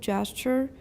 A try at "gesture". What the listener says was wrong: Everyone, gesture. No S. Gesture. And remember, if you're saying gesture, push your jaw up so you can put it back up to eh. Gesture. Don't say gesture. Gesture.